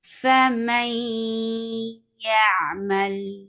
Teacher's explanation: you will find the letter واو and یا، it's not merged in completely but it is ناقص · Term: ادغام ناقص